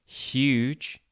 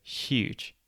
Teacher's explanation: If you pronounce it very slowly and exaggerate the sounds, huge, you can hear it at the beginning. We actually pronounce this H not as h, but as sh, so huge. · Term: sh sound